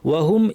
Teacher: টান হয় না এজন্য ওয়াও দেওয়াও নাই আপনার টানবেন না আুয়া হ এর পরে সরাসরি ওয়াতে চলে যাবেন